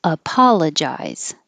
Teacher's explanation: this o is stressed and it sounds like ah